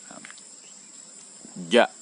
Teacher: Cara pengucapannya, tengah lidah yang telah kita sebutkan tadi, tengah lidah dia menyentuh atau menempel dengan langit-langit atas ya. Bersentuhan. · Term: huruf jim